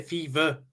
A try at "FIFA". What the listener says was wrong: Yeah, with a V rather than F.